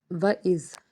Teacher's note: وَإِذ، زال جو ہے، زال کو ہم نرمی سے ادا کریں گے اور اس کو ادا کرنے کے لیے زبان کا ایک چھوٹا سا حصہ اوپر اور نیچے والے دونوں دانتوں کے درمیان میں آئے گا تو زال ادا ہوگا۔